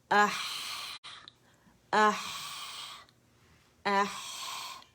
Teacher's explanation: اس میں آپ کی آواز چلے گی اور اس میں رخاوا بھی ہے